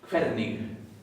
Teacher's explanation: Se pronuncia la G final, suavecita.